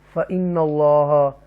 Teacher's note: فإن اللہ تفخیم کے ساتھ اللہ کے نام کو پڑھیں گے